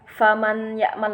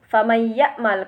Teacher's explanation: ada nun sukun bertemu dengan huruf ya, maka harus dibaca tasdid dan dengung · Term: idgham bi gunnah